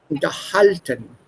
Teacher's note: this is not separable. The stress will be on the second syllable. Unterhalten.